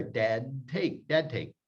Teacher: Here, the D disappears. The T takes over.